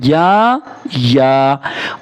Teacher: یا کو ایک الف کے برابر کھینچ کے پڑھنا ہے، یا کو ایک الف کے برابر کھینچ کے پڑھنا ہے، اور یا کو باریک کر کے پڑھنا ہے۔